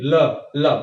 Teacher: इसका उच्चारण करने में जो प्राणवायु है वो जिह्वा के बगल से सामने की ओर जाती है। जिह्वा ऊपर गई और हवा बगल से सामने की ओर निकली। ल, ल, देखिए ल, ल बगल से निकल रही है कि नहीं? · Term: पार्श्विक